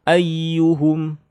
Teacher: Jadi tidak panjang, tidak gunnah tasydid ya-nya. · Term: tasydid biasa